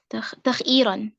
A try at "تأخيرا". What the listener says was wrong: No, تأخيرا. تخييرا. No. See, fa is what? Hamza. Ta. Ain, Kha, Ta'khir.